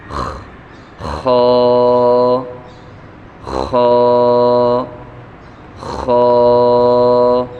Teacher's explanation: خا کو پڑھتے ہوئے جیسے کہ خراٹے کی آواز نکلتی ہے اس طرح آواز نکال کے پڑھیں گے